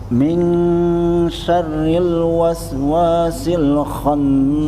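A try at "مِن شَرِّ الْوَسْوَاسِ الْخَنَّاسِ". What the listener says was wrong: Ditekan lagi rohnya Pak. Syarril. Sama satu kayak Pak Usman tadi, R-nya kurang ditahan. Syarril, ada takrirnya Pak. Syarril, kemudian dengungnya dicoba 4 itu kan.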